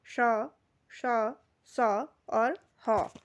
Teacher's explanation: इनके उच्चारण में एक प्रकार की क्या होती है? गर्माहट जैसी पैदा होती है या ऊष्म हवा बाहर की तरफ को निकलती है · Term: उष्म व्यंजन